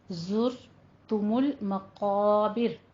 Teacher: میم کے اوپر ضمہ ہے، آپ نے اس کو پر پڑھنا ہے اور دونوں ہونٹ گول کر کے پڑھنا ہے · مقا میں قوف بھی پر ہے اور الف کو بھی ساتھ پر پڑھیں گے